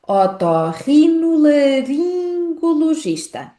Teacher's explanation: Esta palavra inclui ainda um som nasal, o som da vogal nasal IN.